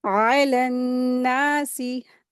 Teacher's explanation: अलन्नासी, आइन को हुरूफ़ हल्क़ी है, इसको हलक से अदा करेंगे और फिर यहाँ पे नून मुशद्दद है, गुन्ना करके पढ़ेंगे।